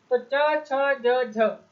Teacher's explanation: ना स्पर्शी के हैं, ना संघर्षी के हैं और ना ही अंतस्थ के हैं, ये स्पर्श संघर्षी व्यंजन के उदाहरण के अंतर्गत आते हैं।